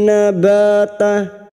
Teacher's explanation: bertemu Hamzah msilah khasirah dua harakat kita panjangkan bihi nabata nabata fathah diikuti alif ba dua harakat kita panjangkan